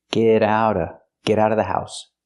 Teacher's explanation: you don't have to pronounce the V sound in of because it's before a consonant.